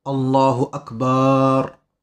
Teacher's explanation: ne pas non plus faire de voyelles longues avec le ba de Akbar